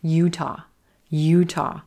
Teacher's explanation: no schwa in this short state name, but that second syllable is quicker